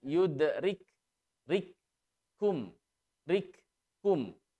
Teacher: huruf kaf sukun tetap dibaca dengan disertai sifat hams dan syiddah